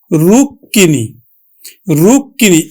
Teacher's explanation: যে বর্ণের সাথে মফলা থাকবে সেই বর্ণটি দুইবার উচ্চারিত হবে। অর্থাৎ দ্বিত উচ্চারিত হবে।